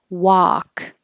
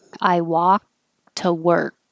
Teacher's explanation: the tongue goes to the k position and stops walk this one is off you have to open a lot